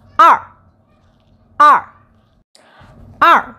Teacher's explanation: fourth tone, stomp your feet